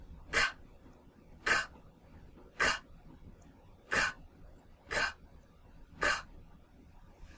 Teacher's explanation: So when I make that sound, I'm not using my voice. So if I'm not using my voice, then this is a whisper sound.